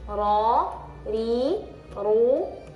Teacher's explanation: Jadi kalau ro tebal ru tebal kalau RI tipis